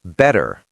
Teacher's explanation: The T in better becomes a flap D. Better. The R at the end of better is hard.